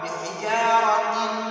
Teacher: तनवीन के बाद यरमलून में से मीम आया है तो हम इस तनवीन को मीम में मर्ज करेंगे , मीम में मुत्तसिल पढ़ेंगे, मीम में मुदगम करेंगे। तो किस